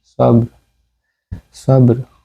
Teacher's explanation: আর আমি ওয়াকফ না করে পড়ছিলাম ওয়াতাওয়াসাউ বিল হক্কি ওয়াতাওয়াসাউ বিস সবর, সবর সবর। তো এখানে বা কলকলায় সুগরা হবে, বা সাকিন